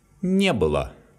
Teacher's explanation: Please note that the stress falls on the particle не, and the word было becomes unstressed.